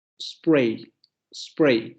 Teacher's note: es una alveolar fricativa sorda, es decir, es más sonora que la oclusiva sorda